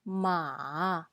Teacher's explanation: we call it tone 3 or say low tone